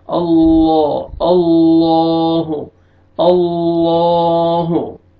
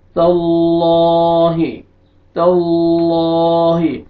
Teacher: آپ ذہن میں رکھیں کہ لام سے پہلے فتح ہے، آپ نے لام کو موٹا کر کے پڑھنا ہے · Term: لام جلالہ